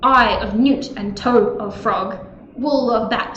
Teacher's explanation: It is trochaic tetrameter, which has trochees instead of iambs, which mean it's stressed, unstressed, stressed, unstressed. So it's the total opposite of an iamb.